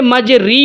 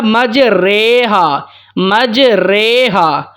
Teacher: زبر اور زیر کے درمیان ہم نے پڑھنا ہوتا ہے۔ لفظ تھا مجرا تھا نا، جب اس کو زبر کو زیر کی طرف ہم نے جھکایا تو لفظ ہو گیا مجریہا، مجریہا۔ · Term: امالہ